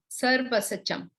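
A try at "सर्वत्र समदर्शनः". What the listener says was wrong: No, that sir is extra that you're saying. Sarvachasam, right? It is not sarvasachasam.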